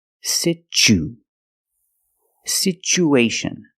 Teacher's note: the second syllable is the long oo like Boot and moon